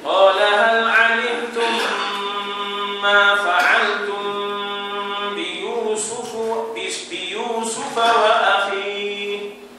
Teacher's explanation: Ada dua tempat dengung tu. Mim berjumpa dengan mim berjumpa dengan ba.